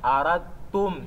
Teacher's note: Estamos já a fazer o idgham eliminando o dal, incorporando no ta.